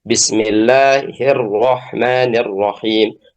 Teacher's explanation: Jadi diringankan ya takrir atau tikrar pada huruf ro, getaran pada huruf ro itu ketika ditasydid.